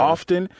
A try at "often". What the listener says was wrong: T. You do not enunciate that T, sir. Let that go. And often. No. often. often.